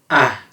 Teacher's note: it needs to be a very quick and opened ah